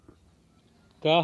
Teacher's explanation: तो क वर्ग के कौन से व्यंजन, क और ख दोनों क्या होंगे, अघोष होंगे